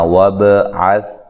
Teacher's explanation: عین کو واضح نکالنا ہے اور سا کو نرم ادا کرنا ہے، بغیر ہلائے اس کو ادا کرنا ہے